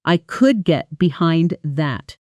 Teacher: The stress naturally falls on get and behind.